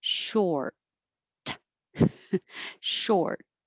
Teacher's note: You just don't release the T if that's the end of the sentence, like I'm a little short, but it's a single syllable, so you'll stretch the or